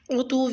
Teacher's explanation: عین کا مخرج وسط حلق سے ادا کریں اور واو کی زیر تنوین کو واو تشدید سے ملا کے غنہ کی آواز کے ساتھ پڑھیں، یعنی عتو۔